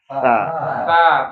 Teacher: Ujung lidah menyentuh ujung gigi saya di depan atas. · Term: huruf ta